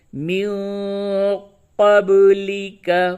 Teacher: نون ساکن کے بعد قاف ہے، اخفا کریں اور با میں قلقلہ کریں